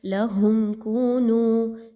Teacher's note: میم ساکن کے بعد کاف کا حرف آ گیا، میم پر بالکل بھی نہیں رکا جائے گا. کاف واو پیش کو، نون واو پیش نو، دونوں واو مدہ ہیں، 1 سے 2 الف کے برابر، دونوں کی سیم لینتھ میں ادائیگی رکھیے.